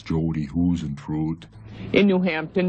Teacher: she had a little bit of a Minnesota accent with the long vowels